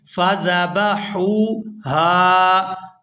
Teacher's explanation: پہلی ہا کو نرمی کے ساتھ ادا کرتے ہوئے حلق سے ادا کریں گے ، فذبحوها، آگے جو ہا ہے یہ پورا ادا ہوگی، فذبحوها